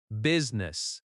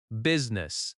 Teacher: The I in the middle is not strongly pronounced. · The stress is on the first syllable.